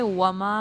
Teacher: میم زبر الف ما، یہ الف مدہ ہے، 2 حرکات لمبا کرے